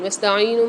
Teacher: وَاسْتَعِينُوا میں دیکھیے عین کے ساتھ یا مد آ رہی ہے، یہاں پر ایک الف مقدار عین کو کھینچیں گے، نون کے ساتھ واو مد آ رہی ہے، یہاں پر نون کو بھی ایک الف مقدار کھینچ کے پڑھیں گے۔